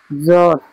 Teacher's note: জদ, জদের মাখরাজ হচ্ছে জিভের কিনারা, জিভের কিনারা এবং তার বরাবর উপরের মাড়ির দাঁতের গোড়ার সাথে লাগিয়ে উচ্চারিত হয় জদ